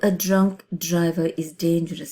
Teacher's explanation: it is a plosive alliteration because of the repetition of the d sound, which is really strong because you want to make your point very strong and powerful, right?